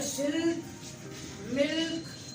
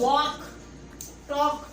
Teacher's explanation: लेकिन जब आप कह रहे वॉक, टॉक, तो इन दोनों लफ्जों में क्योंकि मुंह खुल रहा है, आवाज़ बड़ी निकल रही है, तो आप एल को प्रोनाउंस नहीं कर रहे